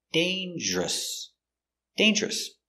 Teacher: dangerous two syllables stress on a first syllable